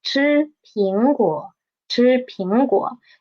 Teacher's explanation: We will just need to pay attention to the disyllabic word, which is 苹果, and we will read the 果, the third tone, into half the tone